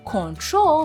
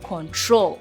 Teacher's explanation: it has the stress on the second syllable of the verb